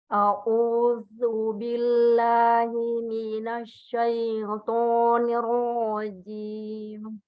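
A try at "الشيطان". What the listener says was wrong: Bukan syoi, tapi syai.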